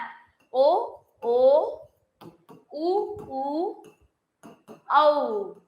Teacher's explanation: அப்போ ஓ ஓ ஓ ஓ ஔ அ உ ஊ இந்த மாதிரி 5 எழுத்துக்கள் உயிரெழுத்துக்கள்ல ஓ ஓ உ ஊ ஔ இந்த 5 எழுத்துக்களுமே உதடுகளை குவிப்பதால் பிறக்கக்கூடியது